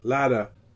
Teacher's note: The t in English would be latter, but in American it's a voiced flap, ladder, very much like the Spanish in pero.